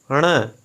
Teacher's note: ڑوڑ کے اوپر کوئی نقطہ نہیں آتا ہے بلکہ چھوٹا سا توئے کا نشان اوپر آتا ہے اور یہ حرف اردو میں نہیں ہے، یہ آواز زبان کو موڑ کے تالوں سے لگانے اور ناک سے نکالنے سے یہ آواز بنتی ہے ڑ۔ واو، واڈھو۔